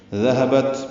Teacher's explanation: تا ساکن پہ ہمس ہے، ذہبت ہا نکالیں اقصی حرف سے